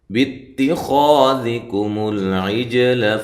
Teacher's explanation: مول لام کو ہلانا نہیں ہے. عیج جیم پہ قلقلہ کرنا ہے، لام کو یہاں بھی موٹا بھی نہیں کرنا.